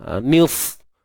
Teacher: untuk sad ni kita matikan dia, dan sad ni tebal.